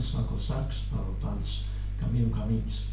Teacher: En los sustantivos masculinos la O final puede caer en plural